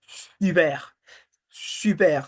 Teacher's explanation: you say si, and then you bring the lips forward as if you are going to whistle.